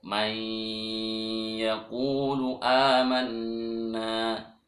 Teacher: Maka asalnya man menjadi mai karena ya dimasukkan non sukunnya itu ke ya. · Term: Idgham bi gunnah